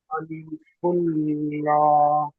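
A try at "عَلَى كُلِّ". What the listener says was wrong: লা নয় ল, লা হবে না আমার সোনা ভাই, ল হবে, ল ল ল। লামের উপরে সাকিন আছে, সাকিন ওয়ালা হরফ ডান দিকের হরফের সাথে মিলিয়ে পড়তে হয়। লামের উপরে সাকিন আছে,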